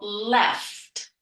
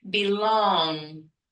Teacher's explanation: Front of the mouth is where it's formed, and front of the words or front of the syllable is where you're going to find this light L. So for example, left, clear light L. · this light L comes at the beginning of the syllable, therefore it is light